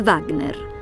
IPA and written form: ˈvaɡner (Wagner)